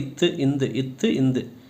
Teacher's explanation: சொல்லி பாத்தீங்க அப்படின்னா மேல இருக்கற பல்லு நாக்கு நாக்கோட நுனிய வந்து அந்த மேல இருக்குற பல்லோட அடிப்பகுதியில போய் தொடும். தொடும்போது இத்து இந்து இத்து இந்து. · இந்த இரண்டு எழுத்துக்களும் நாக்கோட நுனி மேல்வாய் பல்லோட அடிப்பகுதியில தொடும்போது அது பிறக்குது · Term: இணை எழுத்துக்கள்